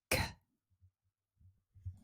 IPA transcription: k